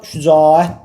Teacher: şücaət dedikdə A-da biz bir uzanma prosesi olduğunu görə bilərik. Ona görə 11-ci testdə cavabımız olacaq C variantı.